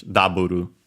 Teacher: double accent on the first syllable. Of course, just like in English, double high, low, low.